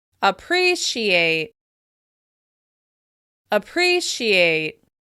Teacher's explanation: If you feel like the first syllable isn't particularly clear, you're right. The vowel sound in the first syllable is actually the schwa sound, which is a very short, very relaxed sound. Because this vowel is not being stressed, the vowel sound is reduced until it's barely there.